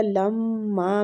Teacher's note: میم مشدد ہے تو اس کو غنے کے ساتھ پڑھیں گے